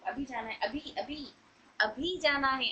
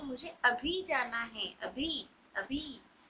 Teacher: जैसे मुझे अभी जाना है यहां पर अभी पर स्ट्रेस देते हैं हम लोग।